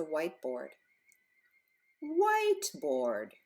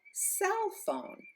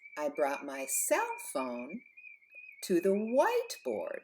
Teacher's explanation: these are all compound nouns or compound words and the accent is always on the first word